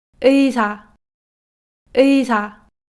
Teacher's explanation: Na laxa, a gente pode notar que a aspiração continua mesmo dentro das palavras. Ela não fica vozeada ou desaspirada como as oclusivas.